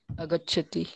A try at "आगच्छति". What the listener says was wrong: आगच्छति है ना आगच्छति आज जोर से बोलना पड़ेगा। अगच्छति तो होता ही नहीं है, आगच्छति होता है, समझ में आया।